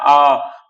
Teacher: उच्चारण मुख द्वार पूरा खुलता है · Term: विवृत